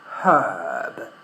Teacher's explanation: In British English, we pronounce the letter H · First, we add a consonant sound, and the second one is, of course, we don't pronounce the R, because we just don't in British English